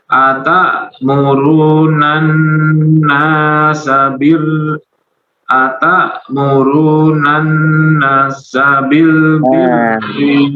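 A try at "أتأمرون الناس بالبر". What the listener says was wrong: Atamuruna nasa, nunnya 2 harakat. Ta'murunan nasa bil birri.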